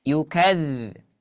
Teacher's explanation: ada aliran suara seperti lebahnya, tapi tidak sederas huruf zai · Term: huruf dzal